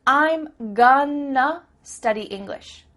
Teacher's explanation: That word to simply becomes a.